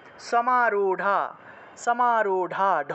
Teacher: এর মত উচ্চারণ করা হয় কারণ সংস্কৃত ভাষায় এই র নেই সংস্কৃত ভাষায় র এর পরিবর্তে ড এর মত উচ্চারণ করা হয়